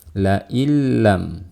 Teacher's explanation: Ini hukumnya disebut dengan idghamun bila gunnah atau idghamun bi ghairi gunnah. Artinya mengidghamkan nun mati atau tanwin ke dalam huruf lam tanpa gunnah. Jadi seolah-olah di sini tidak ada huruf nunnya.